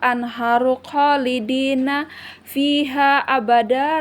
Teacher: Min tahtihal ada nun mati bertemu dengan huruf ikfa atau ta. Maka dia hukumnya ikfa dibaca samar-samar dengan dengung.